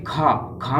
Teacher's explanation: आपको खा ज्यादा वायु निकल रही होगी और थोड़ा घर्षण भी हो रहा होगा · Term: महाप्राण